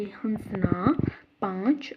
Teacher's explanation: दूसरा है अनुनासिक अंग, इसका उच्चारण मुख और नासिक दोनों से निकलता है